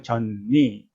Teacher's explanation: 젖니, 니가 비음이기 때문에 젖이 전으로 바뀝니다. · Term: 비음화